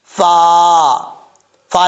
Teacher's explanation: اوپر والے دانتوں کا کنارہ نیچے والے ہونٹ کی تری والی جگہ پہ لگے تو فا پڑھا جاتا ہے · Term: فا کا مخرج